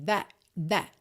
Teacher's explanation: as consoantes oclusivas t e d de that e Word quase não aparecem